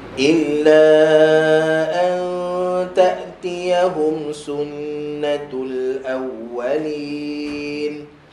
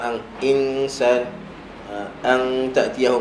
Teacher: Dengung nun mati dengan ta, dengung yang nipis, maka senyumkan.